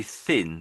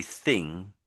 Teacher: you lift your tongue at the front to pronounce it. You lift your tongue at the front. But when you see NG together, you do lift your tongue again, but it's at the back.